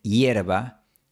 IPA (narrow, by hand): 'jeɾ.βa